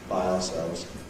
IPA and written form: baɪ ɑːˈselvz (by ourselves)